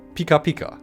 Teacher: The quick, sharp consonants and high vowels match the visual and emotional experience of something sparkling.